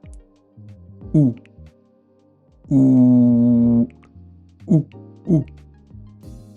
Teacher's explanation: Pour faire ce OU, c'est un peu pareil que le O ou que le U. Il faut avoir la bouche en forme de rond et le son va partir du fond de la gorge et c'est assez grave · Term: le son OU